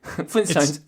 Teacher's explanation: It's the de-aspirated T, but it's still a T.